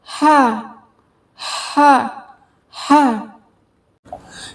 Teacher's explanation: ये बिल्कुल गले के दरमियानी हिस्से से निकलेगा और इसको कभी भी है नहीं पढ़ेंगे।